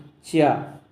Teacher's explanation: आप बोल के देख लीजिए, का सीधा गले से आवाज़ निकल रही, चा तालु, यानी कि वायु ऊपर तालु से टकराते हुए आएगी